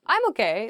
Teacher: it's like sort of upward intonation